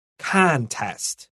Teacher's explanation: contest we're going to stress the first syllable